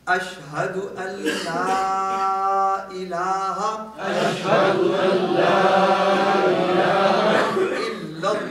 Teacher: اب یہاں دیکھیے حروف حلقی آ گیا، ہا انتہائی حلق سے آئے گا